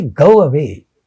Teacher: when we say go away, between the two, there appears to be a wa sound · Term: semi-vowel